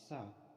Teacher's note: the ta and sa are both voiceless alveolar sounds